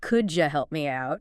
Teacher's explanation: Sometimes sounds blend together like the D and Y and could you making a J sound?